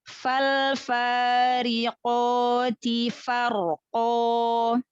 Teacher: lalu ro yang sukun, yang sebelumnya fathah, tafhimkan lagi, tebalkan lagi.